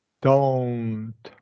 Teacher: we want to close it with that W sound. So we begin with a relaxed jaw, relaxed throat, relaxed tongue, but we're going to bring our lips into that W. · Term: long O